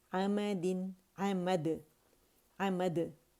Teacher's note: इसे मद करके नहीं पढ़ेंगे कि मुशद्दद नहीं है ये।